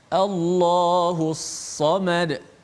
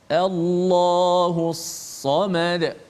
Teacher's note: Ini alif lam syamsiah. Lam itu terus dimasukkan ke dalam sad secara total. Dah dari sudut bacaan lam itu dah tidak ada kerana dimasukkan ke dalam sad.